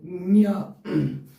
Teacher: కంఠము ముక్కు సహాయంతో కంఠంలో పుట్టి ముక్కు ద్వారా అది ఉచ్చరింపబడుతుంది న్య ఇక కంఠం ద్వారానే కంఠం వద్దనే పుడుతుంది. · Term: అనునాసికాలు